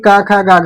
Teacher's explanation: क वर्ग का उच्चार स्थान कंठ है · का वर्ग जो हमारा है यानी का खा गा घा, ये कंठ से बोले जाते हैं